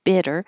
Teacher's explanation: The vowel here in bitter is I, so keep your tongue a little lower. If it sounds like beat, then the tongue's too high.